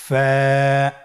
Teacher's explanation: ফা হরফটি উচ্চারণের ক্ষেত্রে বারিক হবে এবং এক আলিফ টেনে পড়তে হবে